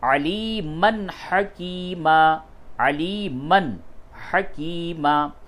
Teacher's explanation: نون اور تنوین کی آواز کو بالکل ظاہر کر کے پڑھتے ہیں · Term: اظہار